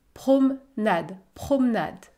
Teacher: je ne prononce pas la lettre e dans le mot promenade parce qu'il y à une console avant et une consonne après